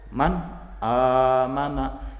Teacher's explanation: Bertemu antara nun sukun dan hamzah, bacaan nun sukunnya tidak berubah sama sekali, tetap dibaca jelas seperti makhraj nun sukun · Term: Idhar, idhar